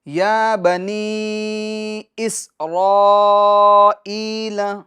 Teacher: یا پر کھڑی حرکات ہے، تو اس کو 1 الف کی مقدار آپ کو کھینچنا ہے